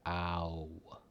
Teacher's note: What your mouth does is it actually says ah, ooh. So it goes from A to U, ow, right? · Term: vowel blend